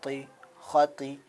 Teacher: طا کو ہم کو پر کر کے نکالنا، آواز کو تھوڑا موٹا کر کے منہ کے اندر گونج کر کے نکالنا ہے طا کو